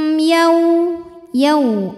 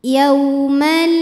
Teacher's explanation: ada wau sukun didahului baris fathah cara membacanya cukup dilembutkan atau dilunakkan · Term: huruf Lin